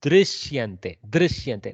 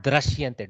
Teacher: actual pronunciation is somewhere between ru and ri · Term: rikara